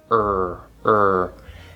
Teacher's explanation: i'm taking my tongue again i'm bunching it back right into that bunched r